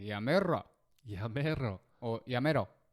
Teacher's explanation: If you roll the R longer, the more angry you sound.